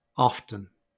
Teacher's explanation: Often is another two-syllable word, but this time the first syllable is stressed, and you see the schwa in the second syllable. And the pronunciation is often.